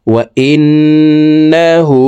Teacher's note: এই হা হরফকে ঠোঁট গোল করে 1 আলিফ টেনে পড়তে হবে, কারণ হার উপরে উল্টা পেশ আছে।